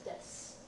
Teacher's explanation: the su on the end of desu is one of those places where the u somewhat disappears